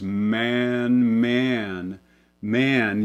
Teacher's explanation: this vowel even more so it becomes man man man you may almost feel like you get a little bit of an off glide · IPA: æ̝